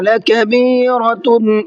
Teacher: لَكَبِيرَةٌ را کو منہ بھر کے پڑھیں گے، اور تا کے اوپر تنوین ہے، اور اس کے بعد میں حمزہ آ رہا ہے۔